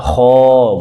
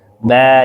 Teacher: Alif ketika sebelumnya huruf tebal, kho, bulat kan mulutnya. Ba, nyengir mulutnya.